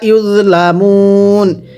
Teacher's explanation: ওয়াওয়ের পরের হরফে ওয়াকফ, তিন আলিফ টানতে হবে